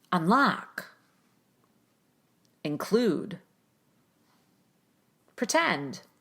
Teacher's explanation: I cut the vowel so much that there's almost no vowel at all in the first syllable of these words, in the prefixes of these words.